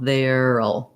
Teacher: we're going to have our voice TH sound. We'll have our air diphthong, and then we'll have just our syllabic L. · And it is a little bit challenging because we have to go from the air to the syllabic L